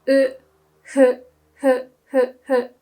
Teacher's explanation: So it's really just like blowing air whilst pronouncing the letter u. So hu. So winter, we say fuyu, not fuyu, okay?